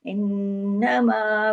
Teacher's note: नून पे तशदीद है, डबल नून है, बड़ा गुन्ना होगा